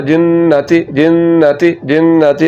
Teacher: यहाँ पर ये नून मुशद्दद आ गया तो यहाँ पर गुन्ना होगा